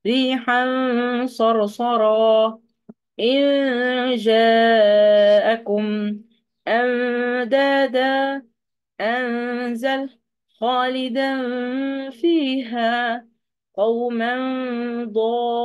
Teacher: على حسب انا بشوف الايه، سواء كان تنوين او نون ساكنه لقيتها من وراها حرف من حروف الاخفاء، مش بوضح النون اصلا ان هي موجوده، ولكن بعمل غنه دليل ان في نون، لكن مش بنطقها نطق كامل